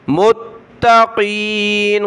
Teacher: मुत्ता ता के ऊपर ये तशदीद है, इसको सख्ती के साथ पढ़ेंगे मुत्तकीन, क़ाफ को मोटा पढ़ें मुत्तकीन। आयत कंप्लीट हुई, इसकी तिलावत